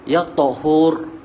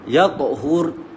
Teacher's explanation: kalau kita berhenti dengan huruf ra akan ada getaran kat lidah